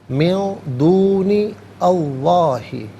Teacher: من میں نون ساکن اس کے بعد دال آ رہا ہے، حرف اخفا ہے، تو نون ساکن کو اخفا کے ساتھ پڑھیں گے. ناک میں آواز لے جا کر گنگنانا اسے اخفا کہتے ہیں.